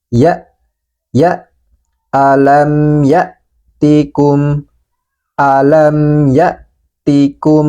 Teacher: pada Hamzah yang dalam keadaan sukun ini suaranya tertahan sehingga terdengar seperti ada jeda